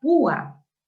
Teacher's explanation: En este caso tenemos, por ejemplo, que la vocal U tiene la fuerza de voz y se separa de la vocal abierta A. Se forman dos sílabas distintas. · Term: hiato acentual